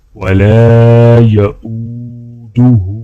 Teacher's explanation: لام کو الف کے ساتھ ملاتے ہوئے ایک الف کے برابر کھینچیں گے. اسی طرح حمزہ کو واو کے ساتھ ملاتے ہوئے ایک الف کے برابر کھینچیں گے. اور ہا کے اوپر الٹا پیش ہے تو ہا کو بھی ایک الف کے برابر کھینچ کے پڑھا جائے گا.